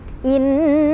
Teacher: Cara bacanya didengungkan. Dengungannya ditahan, boleh 2, boleh 3, boleh 4 ketukan sampai kerasa ke hidung ya. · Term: gunnah musyaddadah